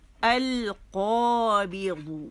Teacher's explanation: یہ موٹا ہے، قوف پہلے درجے کی تفخیم ہے